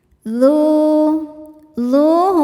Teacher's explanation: hukumnya mad thobi'i zohiri sebab ada wau sukun sebelumnya dommah. Cara bacanya duzu panjang dua harakat